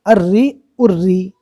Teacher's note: تشدید والی رو کے نیچے زیر تو تشدید والی رو باریک ہوگی